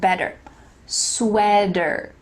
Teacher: word sweater there is a t but like we talked about in american english that t is going to change to a d